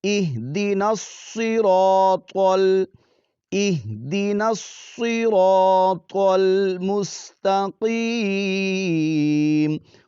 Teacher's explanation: تینوں حروف موٹے پڑھے جائیں گے، اہدنا الصراط اہدنا الصراط المستقیم، قوف کو پر پڑھیں گے، حروف مستعلیہ میں سے ہے